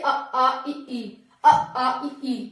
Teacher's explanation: तो निरनुनासिक कौन से होते हैं? नाक से नहीं, केवल मुंह से इनका उच्चारण होता है। जैसे अ आ इ ई, अ आ इ ई, मुंह हो रहा है, बिल्कुल नाक पे नहीं जा रहा।